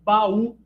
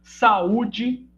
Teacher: São duas vogais, né? Duas vogais adjacentes que, como núcleo de sílabas, precisam ocupar sílabas distintas. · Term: hiato